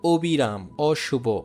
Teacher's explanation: যদি অ নাবোধক হয়, নেগেটিভ যদি হয় তাহলে সে অ উচ্চারণ অবিকৃত থাকবে। যেমন অবিরাম, অশুভ, এগুলো হচ্ছে নেগেটিভ শব্দ, তো এই ক্ষেত্রে অ ও এর মতোই থাকবে।